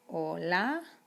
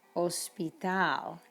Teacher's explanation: you don't even pronounce the h in spanish it is total totally invisible